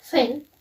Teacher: voice sound its place of articulation is Dental so it means it's made by touching the front of tongue to the upper teeth and it's fricative